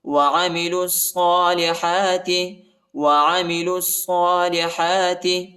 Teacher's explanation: لام کو صاد کے ساتھ ملائیں گے اور شدت کے ساتھ صاد کو پڑھنا ہے، صاد کے اوپر شد آیا ہے